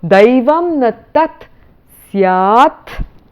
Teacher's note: because the ta and the sa are both dental sounds, there is no modification that it undergoes